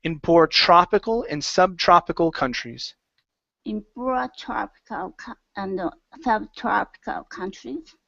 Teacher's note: Give me an ah sound instead of tro, tra. Go to an ah. Open your mouth nice and wide.